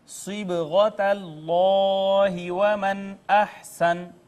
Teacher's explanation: یہاں پہ آپ دیکھیں با اور با ساکن حروف کلکلہ میں سے، یہاں پہ کلکلہ ہوگا، اس میں جلالت ما قبل مفتوح، لہٰذا اس کو مفخم پڑھیں گے۔ نون ساکن ما بعد حرف اظہار، یہاں پہ اظہار ہوا۔